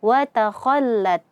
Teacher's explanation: Nah, gara-gara proses daripada isti'la ini, sehingga huruf kha itu akan terdengar tafkhim ya, tebal ketika kita ucapkan. Nah, jadi prosesnya adalah isti'la, hasilnya adalah tafkhim, tebal. · Gara-gara terangkatnya pangkal lidah kita, lidah bagian belakang terangkat, sehingga ruangan suara dari aliran huruf kha yang ingin kita keluarkan itu menyempit dan suara naik ke langit-langit. Nah, gara-gara proses daripada isti'la ini, sehingga huruf kha itu akan terdengar tafkhim ya, tebal ketika kita ucapkan.